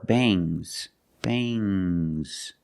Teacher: it makes the nasal sound um but it also makes a little G sound but not a hard strong